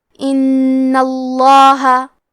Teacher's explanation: کلمت ان میں حرف نون پہ تشدید ہے لہذا 2 حرف کے برابر نون کو پڑھنا ہے · نون کو پڑھنا ہے، اور کیونکہ تشدید زبر کا ہے تو ہم لفظ الجلالہ کے لام کو موٹی آواز میں پڑھیں گے